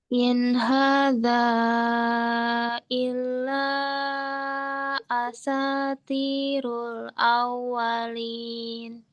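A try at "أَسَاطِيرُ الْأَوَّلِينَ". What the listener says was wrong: Tebalkan to yaitu tirul.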